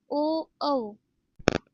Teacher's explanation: कंठ व ओष्ठ स्थानापासून उच्चारले जाणारे स्वर